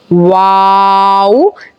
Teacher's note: जो आपके दोनों होंठ हैं उसको हम बिल्कुल गोल कर लेंगे और फिर इसको बोलना शुरू करेंगे। वाव, ये बोलने में इस तरीके का होता है कि छोटा सा राउंड मुंह का बना के फिर वो बड़ा होता है और आवाज़ पैदा होती है।